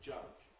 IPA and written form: ʤ̥ʌʤ̥ (judge)